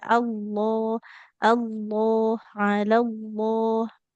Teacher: jadi kalau lafadz Allah Allah, lam sebelum huruf sebelumnya fathah lamnya tebal ya.